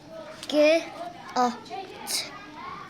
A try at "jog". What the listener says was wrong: It's a J. Og.